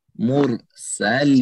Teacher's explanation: रा पुर होगा, यानी मोटा पढ़ा जाएगा। मुरसलीन, फिर यहाँ पे उठने के 3 कायदे हैं, आप जैसे चाहेंगे 2 हरकत, 4 हरकत और 6 हरकत किस तक लंबा कर सकते हैं।